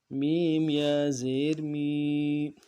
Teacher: یا ساکن اس سے پہلے کسرہ ہو تو یا مدہ کہلائے گا، ایک الف مقدار میں کھینچنا ہے۔